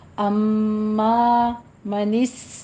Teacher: माँ नहीं कहना, नाक में आवाज़ नहीं ले जानी। अम्मा मनिस, सीटी की आवाज़ आएगी, हमस करना है आपने।